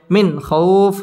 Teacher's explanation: নুন সাকিনের বামে খ আসছে খ ইজহারের হরফ গুন্না ছাড়া স্পষ্ট করে পড়তে হবে